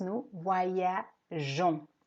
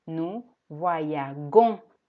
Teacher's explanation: Esta E no se pronuncia como tal, es simplemente un puente entre la G, entre el sonido je y el sonido on, porque si no estuviera esa E, tendríamos que decir nous voyagons con una G, pero el sonido del verbo es je voyage.